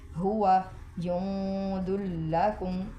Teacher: ادھر جوں پہ ناک میں سے آواز چھپا کے نکالیں گے، اخفا کریں گے